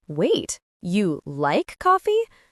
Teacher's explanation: but you like coffee with stress on you might mean surprise